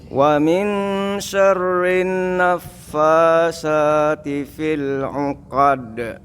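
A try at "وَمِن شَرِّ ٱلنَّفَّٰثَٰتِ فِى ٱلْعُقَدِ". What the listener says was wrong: Lidahnya keluarin Pak. Dia itu lebih ke TH Pak sebenarnya Pak.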